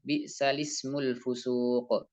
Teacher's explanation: Hamzahnya kemana? Hamzahnya tidak dibaca. Jadi langsung dibaca lamnya saja. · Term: nakal